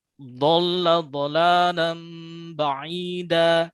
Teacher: Tepi lidahnya naik ke geraham atas. Nah, ini malah nggak ke geraham, tapi tergigit. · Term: huruf dhad